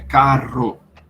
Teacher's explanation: o RR sendo pronunciado como duas vibrantes mesmo né carro a língua vibrando dentro da boca para pronunciar isso · Em alguns lugares, como em São Paulo, em algumas regiões de São Paulo, você vai ter o RR sendo pronunciado como 2 vibrantes mesmo